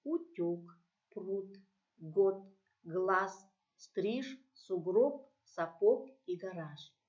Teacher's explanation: Вы, наверное, заметили, что во всех этих словах на конце слова эти звонкие согласные оглушаются. Поэтому вместо этих согласных мы слышим другую парную, глухую согласную.